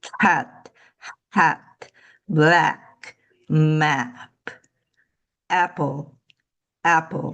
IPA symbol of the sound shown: æ